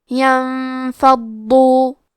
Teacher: کلمت ینفضو میں نون ساکن ہے پھر حرف الفا ہے، یہاں بھی حکم ہے اخفاء تو ہم یہ حکم کو غنہ کے ساتھ ادا کریں گے. حرف الضاد کی ادائیگی زبان کے کروٹ اور اوپر کے داڑھوں کے جڑ سے ہے. ضاد حروف تفخیم میں سے ہے تو ہم یہ حرف کو بھاری آواز میں پڑھیں گے اور کیونکہ اس پہ تشدید ہے تو ہمیں 2 حرف کے برابر ضاد کو پڑھنا ہے اور کیونکہ تشدید پیش کا ہے تو ہم پیش کو ظاہر کریں گے.